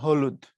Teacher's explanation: তুমি যখন হ বলো একদম ভেতর থেকে উচ্চারণটা আসে হ, এজন্য তারা বলা হয় কণ্ঠনালীয় বর্ণ।